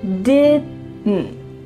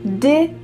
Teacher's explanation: So that final D is cut short, and the final T as well is cut, so it's really gonna be just your throat.